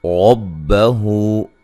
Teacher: را کو موٹا ادا کریں گے، ہو مد اصلی ہے.